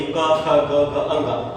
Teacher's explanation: क, ख, ग, घ, अंग जैसे बोला जा रहा है तो हमारा जो है ये कंठ में वाइब्रेशन हो रहा है, हमें पता चल रहा है यहाँ से आवाज निकल रही है, तो इसको याद करने की जरूरत ही नहीं। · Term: कंठ्या वर्ण